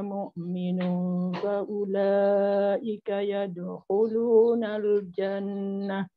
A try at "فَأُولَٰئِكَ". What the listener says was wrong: Okey, faulaika ambil balik situ dan panjang enam harakat. Cukup enam harakat.